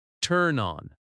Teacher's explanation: Turn on links together slightly.